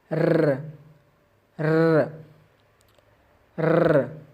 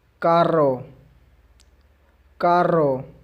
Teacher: پہلے آتے ہیں ڈبل آر کی آواز کی طرف، جس کو ہم کچھ اس طرح سے پروناؤنس کریں گے: ر ر ر۔ منہ کے تالوں پر زبان وائبریٹ کر کے آواز نکالنی ہے